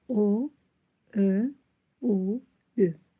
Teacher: Dodaqlanan saitlərin tələffüsü zamanı dodaqlar bir qədər irəli uzanır və dairəvi forma alır.